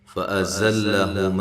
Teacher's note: زا کو زور سے سیٹی سے، لام باریک ہے